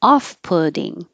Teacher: That putting with a T, when we say that and the T's change to D's, it sounds just like pudding